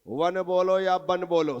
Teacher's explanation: वा वन का और बा बकरी का बुंदेलखंड में इसमें कोई अंतर नहीं है वन बोलो या बन बोलो सब चलता दोनों एक भाषा है